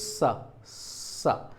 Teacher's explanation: अब देखते हैं कि जब हम इन व्यंजनों का उच्चारण करने की कोशिश करते हैं तो मुख के विभिन्न अंग आपस में स्पर्श करने के लिए पास पास आते हैं, और जैसे ही वे पास पहुंचते हैं दोनों के बीच में वायु आ जाता है, और वायु के कारण वे आपस में स्पर्श नहीं कर पाते, दूर रह जाते हैं। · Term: ऊष्म व्यंजन